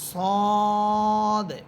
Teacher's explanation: সদ বলার সময় আমি কিন্তু শেষে একটা কলকলা করতেছি সদ এর কারণ হচ্ছে সদ হরফকে এটা তো একটা সদ হরফ কিন্তু এই হরফটাকে যখন আমরা হরফ হিসেবে ধরি তখন এটা টাকে আমরা ভেঙ্গে পড়ি।